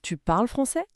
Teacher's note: Tu parles français. Mais on change la musique de la phrase. La voix monte à la fin. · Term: l'intonation